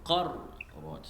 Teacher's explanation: ra sukun dibaca dengan tebal